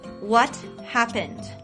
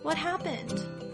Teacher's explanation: getting angry what happened sadly what happened or robotically what happened as you can hear the tone of my voice changes when the underlying emotion changes